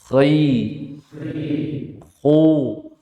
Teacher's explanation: Bukan suara keras yang bunyi kha, enggak. Tapi suara pelan tapi menggelembung suaranya. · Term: tebal